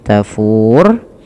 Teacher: Kemudian karena waqaf menjadi tafur, yang dimana rohnya dimatikan. Nah, sebelum huruf roh ini, nah ini roh ini dinamakan dengan sukun arid, sukun yang muncul karena waqaf atau berhenti.